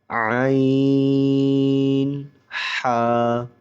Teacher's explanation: عین، حا، یہ دونوں حرف حلق کے درمیان والے حصے سے ادا ہوتے ہیں